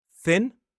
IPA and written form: θɪn (Thin)